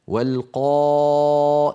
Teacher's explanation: لاحظوا بأن الألف فخمت لأنها سبقت بقاف، والقاف من حروف الاستعلاء فهي مفخمة دائما